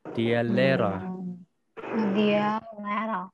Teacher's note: huruf H ini kalau dia ketemu dengan huruf vokal, maka huruf vokal tersebut dibaca sedikit lebih panjang